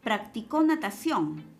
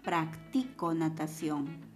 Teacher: En esta oración, si observamos, el acento está en la última, pero podemos moverlo y decir practico natación. En consecuencia, esta también sería una respuesta.